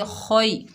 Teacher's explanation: ख के ऊपर ज़बर है, आगे या साकिन है, या लीन है, नरमी और जल्दी से अदा करेंगे। ख को मोटा पढ़ेंगे